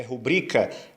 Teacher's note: Rubrica não é rúbrica, é rubrica. É também uma paroxítona. A sílaba tônica é o bri.